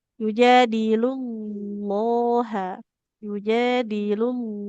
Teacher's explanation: Tebal kan di huruf lamnya ibu ya.